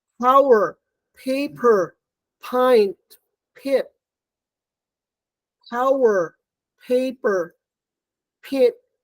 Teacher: It's bilabial. So it's voiceless, aspirated, bilabial, plosive. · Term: aspirated p